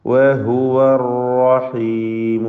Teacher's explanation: അർ റഹീമു റായി തഫ്ഖീം ചെയ്തുകൊണ്ട് ഉച്ചരിക്കണം. തക്രീർ വരാതെ സൂക്ഷിക്കേണ്ട സന്ദർഭമാണ് റായിന് ഷദ്ദുള്ളത് കൊണ്ട്. വഹുവർ റഹീമു, ഒറ്റ റാ ഉച്ചരിക്കുക, അതാണ് ഉദ്ദേശിച്ചത്.